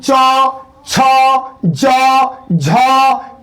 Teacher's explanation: यानी जीभ उठ के ऊपर सटता तारू में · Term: तालू